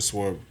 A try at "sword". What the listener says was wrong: why do you pronounce the W in sword, bro? You pronounce it as just sword. It just got a W in there.